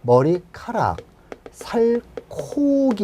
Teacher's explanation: 이 뒤에 가락이라든가 고기가 오게 되면 이 히읗과 기역이 합쳐지면서 뭐를 만들어요? 키읔을 만들어요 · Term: 격음화